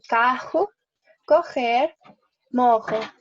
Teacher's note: la doble R también se va a pronunciar como una J.